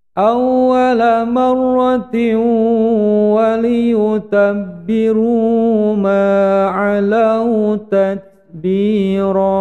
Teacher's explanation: huruf ta yang disukun menjadi tat, ada angin sedikit keluar atau hamus